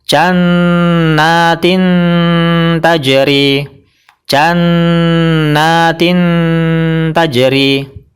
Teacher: yaitu pada gusi gusi atau daging tempat tumbuhnya gigi seri atas suara yang dihasilkan dari hukum ikhfa aqrab adalah mendekati bunyi n kalau dalam bahasa Indonesia mendekati bunyi n kemudian suara ditahan dua · mendekati bunyi n kalau dalam bahasa Indonesia mendekati bunyi n kemudian suara ditahan dua ketukan agar tidak tertukar dengan izhar yang hanya dibaca satu ketukan